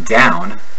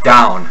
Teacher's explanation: Irish speakers begin this sound with a short o as in not